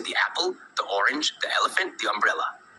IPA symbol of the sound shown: ðiː